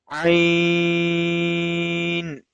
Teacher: Ain and Ha has same makhraj from the middle of throat. Ain originate from the center of the throat. · Ain is from the throat letters and always we will read it from the middle of our throat. Ain and Ha has same makhraj from the middle of throat.